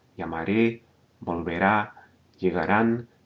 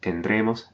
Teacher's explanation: you're going to hear the accent fall on the final syllable, except in the case of the nosotros forms.